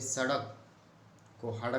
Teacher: शब्द के प्रारंभ की जो स ध्वनि होती है वो ह के रूप में उच्चारित की जाती है